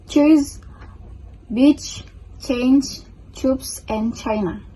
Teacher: In fact, their pronounce is divided into two pairs, starting with an interruption in the passage of air followed by a fricative sound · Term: affricates